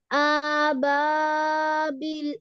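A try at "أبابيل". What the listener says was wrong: হ্যাঁ, হালকা একটু টান হয়ে গেছে, হ্যাঁ। আবাবিল।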